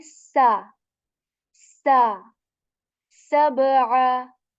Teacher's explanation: So you kind of put push air out of your mouth a bit, and there is this whistle sound in seen.